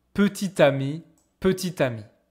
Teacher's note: The two of them, because of the liaison with the letter T, they are pronounced exactly same.